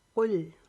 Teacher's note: کاف موٹا پڑھیں گے، لام بریک پڑھیں گے